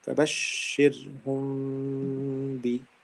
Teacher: So here it's ba. If mim sakin is followed by ba, and this comes in two words, from two words. So then I'll hide the sound of mim. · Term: الإخفاء الشفوي